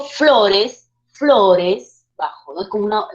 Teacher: nos damos cuenta de la fuerza de voz radica en la penúltima sílaba